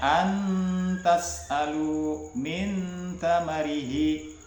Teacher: suara nun maupun tanwin itu masih tetap terdengar, akan tetapi samar antaranya izhar dan idgham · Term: ikhfa